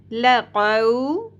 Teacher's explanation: 2 نقطوں والی قاف تالو کے نرم حصے سے ادا کی جائے گی